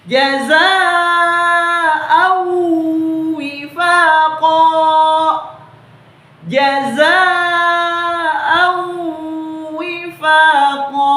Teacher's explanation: Jadi huruf an, ya, kita hilangkan an-nya dan kita langsung masukkan ke huruf waw dengan cara didengungkan dan ditahan selama 2 harakaat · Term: idgham bi gunnah